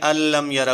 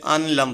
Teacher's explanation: تو آگے کیا ہے ادغام وداؤٹ غنہ، کمپلیٹ ادغام لام را۔ دی ساؤنڈ آف نون ساکن ول ڈس اپیئر کمپلیٹلی